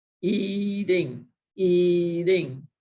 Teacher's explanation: it really does sound more like a d when you're emphasizing it in spoken language